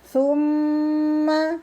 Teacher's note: mimnya bertasydid dibaca mendengung. Summa, ukuran 2 harokat ya.